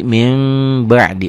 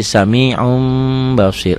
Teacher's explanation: Nah, bunyi n-nya kalau bertemu dengan ba berubah jadi m. Biasanya di Quran itu di atas ba ini, di atas huruf ba itu ada mim kecil ya. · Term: Iklab